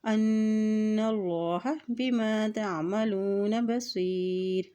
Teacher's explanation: اللہ کے نام سے پہلے زبر آ گئی ہے تو اللہ کا نام بھی یہاں پر موٹا ادا کیا جائے گا